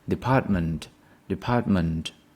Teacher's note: show you that department the stress syllable is the second one the stress is on the second syllable